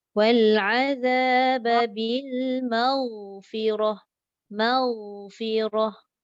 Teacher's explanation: Jaga ghain jangan bunyi lantunan maghfirah.